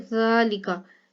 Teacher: यहाँ पर जाल के ऊपर खड़ा ज़बर था इसलिए लंबा करके पढ़ा गया, लेकिन लाम के नीचे ज़ेर है, काफ के ऊपर ज़बर है, तो इसको लंबा नहीं करेंगे और काफ को अगले लाम के साथ मिला के पढ़ेंगे।